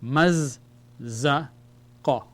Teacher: We have to pronounce the za twice. The shadda indicates the letter is twice.